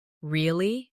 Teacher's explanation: Say, Really? with a rising tone to show surprise.